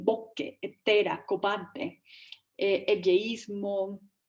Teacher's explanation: hacen una asimilación de s y r